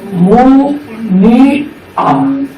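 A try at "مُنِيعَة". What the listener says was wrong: না না, এখানে একটা জের আছে তো মুনিয়া মুনিয়া এটা আইন আইনটাকে উচ্চারণ করতে হবে একটু চাপা হবে আইন মুনিয়া মুনিয়া বলো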